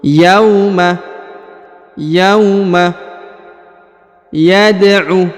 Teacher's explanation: huruf ya diayun dengan e lembut sekali karena di depannya terdapat wau sukun